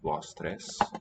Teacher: Nice and open vowels there at the end.